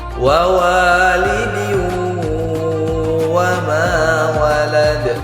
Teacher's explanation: huruf tanwin berjumpa dengan huruf wa, maka hukumnya idgham bi gunnah. Harus kita dengungkan 2 harokat.